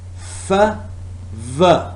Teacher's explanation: labiodental. Lower lip and upper teeth are involved